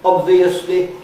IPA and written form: ˋɒbviəsli (obviously)